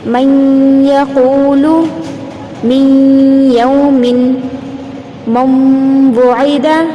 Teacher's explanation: نون کی آواز کو بازو والے حرف میں ملائیں گے، پلس غنہ بھی کریں گے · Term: ادغام مع الغنہ